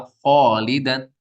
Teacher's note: الف سے پہلے خا پر حرف ہے تو الف بھی پر ہو جائے گا